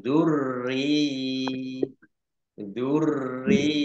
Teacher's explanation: dengan harakat kasrh ini namanya mad tamkin mad tamkin ini panjang dua harakat ditahan dua harakat